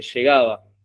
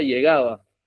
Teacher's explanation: Que es el yeísmo, entonces dice, o la doble L dice llegaba, pronuncia la doble L como una Y · Eso también pasa en algunas provincias del litoral, donde la doble L se diferencia de la Y